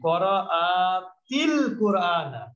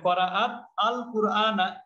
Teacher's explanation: আর এখানে হচ্ছে আল কোরআনা এখন দেখেন এখানেও সুকুন এখানেও সুকুন দুই সুকুন পাশাপাশি থাকলে প্রথম সুকুনটা জের হয়ে যায় মিলিয়ে পড়তে গেলে